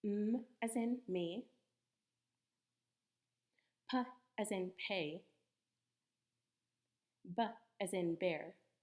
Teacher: bilabial sounds are produced with both lips together.